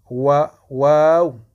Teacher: Waw, c'est les lèvres, mais arrondies.